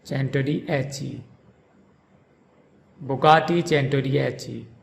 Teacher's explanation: In Bugatti, the emphasis is on the second syllable ga, Bugatti, and in chen-toh-dee-EH-chee, the emphasis is on the fourth syllable